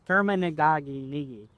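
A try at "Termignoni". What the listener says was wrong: Terminoni. The G is silent.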